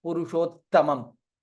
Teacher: Here it is half ta and full ta